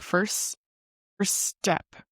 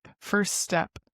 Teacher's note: You don't really pronounce the T until the word step. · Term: hiss effect